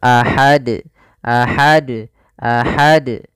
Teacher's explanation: dengan ha kecil jangan dibaca dengan J Ahad kemudian di sini harus dipantulkan karena dia termasuk huruf Qalqalah kalau kita wakaf maka harus mantul